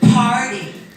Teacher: that P is strongly aspirated, right? Nice, strong puff of air.